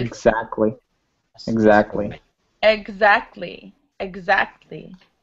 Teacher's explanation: A lot of the time after an E, it's a GZ sound.